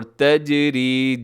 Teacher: تجری جیم اس میں ہوگا قلقلہ، را ہوگی باریک